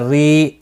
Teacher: را زیر کی وجہ سے باریک پڑھا جائے گا. یا مدہ بھی ہے، ایک الف کی مقدار کے برابر کھینچ کر بھی پڑھا جائے گا.